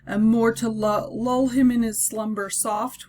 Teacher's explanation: we have a lot of rounded vowel sounds and so that would be an example of assonance